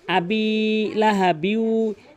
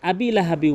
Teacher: এখানে বা কিন্তু অবশ্যই টেনে পড়তে হবে। জের বাম পাশে জ আসলে টেনে পড়তে হয়।